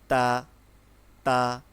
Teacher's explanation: তা উচ্চারণ করব হচ্ছে জিহ্বার আগা থেকে। যেমন তা উচ্চারণটা একটু শক্ত হবে এবং হবে এমন থাকবে মিডিয়াম। · জিহ্বার আগা থেকে উচ্চারণটা করব। তা উচ্চারণ করব হচ্ছে জিহ্বার আগা থেকে।